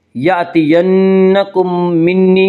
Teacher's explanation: یأتینکم منی میں ادغام شفوی ہوگا۔ اس کا قاعدہ ہے کہ میم ساکن کے بعد اگر دوسری میم آئے تو وہاں پہ ادغام شفوی ہوگا۔